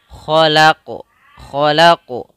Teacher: Kha salah satu huruf yang harus kita tebalkan yaitu huruf isti'la. Yang dimana cara membacanya yaitu kita angkat pangkal lidah kita.